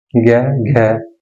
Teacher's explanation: ज्ञा बोलने में क्या हो रहा, कम हवा निकल रही, और घै बोलने में ज्यादा हवा निकल रही मुंह से